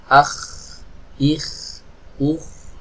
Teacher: ketika mengucapkan huruf k ada nafas yang ikut mengalir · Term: sifat hams